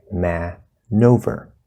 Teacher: With man and over, we actually have the N connecting to over, so it sounds like man-over.